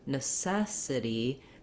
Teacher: in necessity the letter t is gonna sound more like a d sound um because it's unstressed it's between two vowels so it's gonna